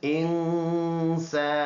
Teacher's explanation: اس میں ہم نے بقدر 1 الف اس میں غنہ کرنا ہے، ناک میں آواز لے جانا ہے